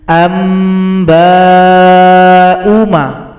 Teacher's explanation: Di sini hamzah yang dhamma berjumpa dengan alif. Hamzah dhamma bisa dikatakan panjang kalau jumpa waw sukun, tapi sini jumpa alif. maka u dibaca pendek.